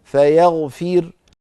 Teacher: أما عند الوقف بالسكون فيغفر، فتكون الراء ساكنة مسبوقة بكسرة فنرقق